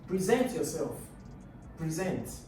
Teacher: So present. The stress is on the second syllable.